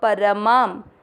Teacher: पर दोनों अक्षर पूरी, दोनों में अमिक्स करेंगे परमा। शब्द पूरा होने के बाद मा पे अनुस्वार आधा म